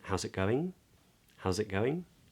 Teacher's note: typically speaking upward inflection because it's a question